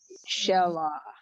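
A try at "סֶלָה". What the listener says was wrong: Se. It's an S sound. The samach. Sela.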